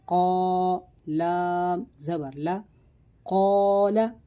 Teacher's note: یہ الف کو موٹا کر کے پڑھا گیا کیونکہ الف سے پہلے پر حرف ہے۔ 2 نقطے والا جو قوف ہوتا ہے وہ حروف مستعلیہ میں سے ہے، اور حروف مستعلیہ ہر حالت میں موٹے یعنی پر کر کے پڑھے جاتے ہیں۔